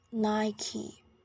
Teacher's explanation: In both American and British English, it's pronounced as Nike. Remember, the stress is on the first syllable.